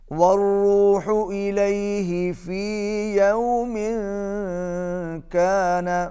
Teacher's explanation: تنوین کے بعد کاف ہے، اور کاف حرف اخفا میں سے ہے، اس لیے یہاں پر آواز ناک میں جائے گی۔